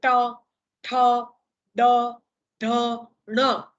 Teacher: જીભનો આગળનો ભાગ આમ બેન્ડ થશે, વળશે અને પેલા મૂર્ધાને જઈને અડશે અને ધ્વનિઓ પેદા થશે, એટલે એને મૂર્ધન્ય વ્યંજન તરીકે ઓળખવામાં આવે છે.